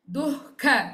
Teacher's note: ದು ವಿಸರ್ಗ followed by ಕ ಸೋ ಇಹ್ ಸೌಂಡ್ ದೆನ್ ಖ ಮಹಾಪ್ರಾಣ